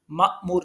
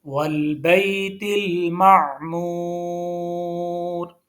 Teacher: معمور میں عین کو ہم نے صاف کر کے پڑھا ہے، مأمور نہیں پڑھنا، کیونکہ یہ جو ہے یہ آواز حمزہ کی ہے. عین کی آواز حلق کے بالکل مڈ میں سے نکلتی ہے